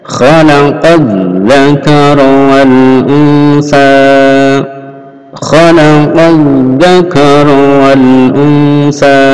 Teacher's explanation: Ini qaf langsung masuk dzal.